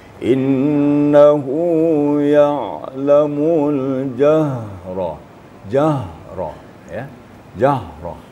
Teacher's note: apabila huruf ha itu sukun juga ada getarnya. Maksimal juga.